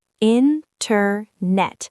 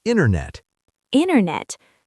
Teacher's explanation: In American English, if a T is in the middle of a word, it often disappears or changes. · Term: disappearing T